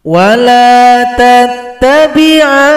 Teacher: Panjangkan dulu enam ketukan, baru tasydid pada huruf nun. Setelah tasydid, dengungkan lagi. Berarti enam, kemudian dua dengungan. وَجَاوَزْنَا بِبَنِي إِسْرَائِيلَ الْبَحْرَ فَأَتْبَعَهُمْ فِرْعَوْنُ